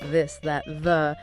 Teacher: You've got the voiced the. That's where you feel a vibration in your throat, on your tongue.